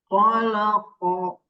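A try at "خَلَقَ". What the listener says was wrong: Ditebalkan lagi ko-nya. Khalaqa, tebalkan lagi.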